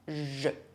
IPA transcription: ʒ